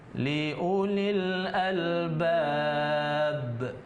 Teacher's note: Karena kita berhenti, maka huruf akhir itu jadi sukun. Maka bunyinya itu lebih besar ketimbang kalau dia misalnya qalqalah tadi, huruf qalqalah itu di tengah kata. Ini liulil albab, ada pantulan yang lebih besar. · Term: qalqalah kubro